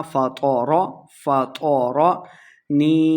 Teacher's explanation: تو کو موٹا پڑھیں گے، لمبا بالکل نہیں کرنا۔ فطر، فطرنی، نون کے آگے یا ہے تو یا مدہ ہو رہا، یہاں ہم نے اس کو 2 حرکات لمبا کیا ہے۔